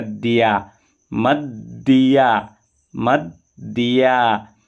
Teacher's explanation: एक द का उच्चारण म के साथ करेंगे म और दूसरा द या के साथ मिल जाएगा तो बन जाएगा दिया मद दिया मद दिया चाम या एक